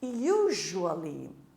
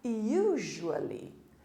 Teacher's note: Estão percebendo que o S ganhou um som de J agora?